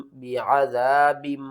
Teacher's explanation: یہاں پر دیکھیں نون ساکن یا تنوین کے بعد اگلا حرف با ہوگا تو ہم نون کی آواز کو میم کی آواز میں بدل کر پڑھیں گے۔ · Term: اقلاب